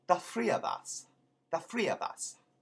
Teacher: when you have a TH at the beginning of a word, it becomes an F, kind of wide in the front of the mouth